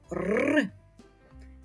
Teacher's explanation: останній звук в цьому слові звук р послухайте як він звучить твердо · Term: твердий приголосний